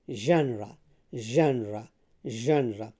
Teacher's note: So the stress is on the first syllable, and then the sound is not ja, it is not za, it is ja.